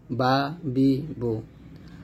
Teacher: বা উচ্চারণ করতে হবে দুই ঠোঁটের ভিজা জায়গা হইতে, যেমন বা এরকম।